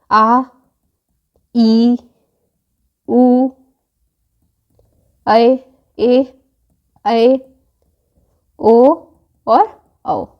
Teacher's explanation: अगर हम बात करें दीर्घ स्वर की तो इनके उच्चारण में ह्रस्व स्वर से अधिक समय लगता है।